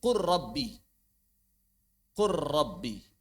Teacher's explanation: Wallamu 'inda ra, dan huruf lam ketika bertemu dengan ra adghim, maka idghamkanlah. Mushbi'an mahdhan, maka dia menjadi huruf yang tasydid murni.